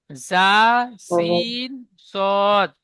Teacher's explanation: জিভের আগা এবং সামনের, উপরের এবং নিচের 2 দাঁতের আগার সাথে লাগিয়ে উচ্চারিত হয় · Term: 13 নম্বর মাখরাজ